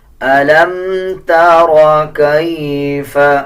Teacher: جزم کا مطلب ہوتا ہے کہ جب کسی الفاظ کے اوپر جزم آ جائے اس کو پچھلی الفاظ کے ساتھ ملا کے پڑھا جائے۔ اب جیسے میم کے اوپر جزم ہے تو لام کو میم کے ساتھ ملا کے پڑھا جائے گا